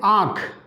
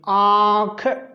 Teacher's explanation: अनुनासिक में जो हवा मुंह से और नाक दोनों से निकलती है उसे अनुनासिक कहते हैं। इसमें क्या है कि जो हवा है, हवा ये मुंह और नाक प्लस नाक दोनों से निकलती है।